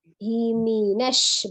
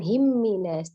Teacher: tidak tasdid mim ya, mi ya, turunkan rahang bawahnya jelas ya. Himinash bukan himminas, tidak ditasdid mimnya.